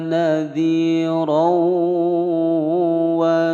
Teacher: ada fathatain bertemu wawu, dimasukkan, ya, dimasukkan dan didengungkan selama 2 ketukan. Hukum bacaan idgham bi gunnah.